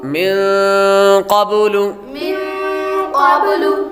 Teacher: یہاں پر غنہ بھی ہوگا، نون ساکن کے بعد قاف حروف اخفا میں سے آ رہا ہے، غنہ ہوگا